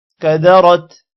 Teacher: یہاں پر کسی بھی ورڈ کو لمبا نہیں کرنا اور را کو موٹا کرنا ہے۔